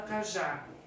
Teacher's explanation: Cajá vai acento porque tem duas sílabas. A última sílaba, que é o já, é uma sílaba tônica, é a mais forte, e vai o acento porque termina em a.